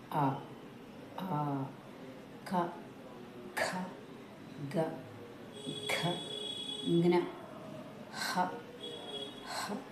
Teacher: మన కంఠం నుంచి వస్తున్నాయి. మనం ఈ అక్షరాలు పలికేటప్పుడు కంఠం ఈ స్థానంలో మనకి వైబ్రేషన్ వస్తూ ఉంటుంది. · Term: కంఠ్యాలు